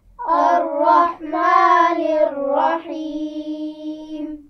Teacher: الرحیم میں یا مدہ ہے اور اس کو بھی زیر کی آواز سے تھوڑا سا زیادہ کھینچ کر پڑھا جائے گا